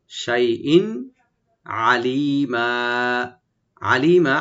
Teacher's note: এখানে হামজা যে তানভিন আছে এখানে আমরা এজাহার করবো, এখানে গুন্না হবে না, খেয়াল রাখবেন, যেহেতু তানভিনের পরে আইন আসছে হরফ কন্ট্রোল অক্ষর থেকে।